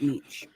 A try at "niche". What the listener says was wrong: It's not niche. It's a niche, like SH. Although it's spelled with a CH, it's pronounced niche.